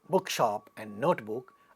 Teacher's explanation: when we say compound nouns like bookshop and notebook, again the first one is stressed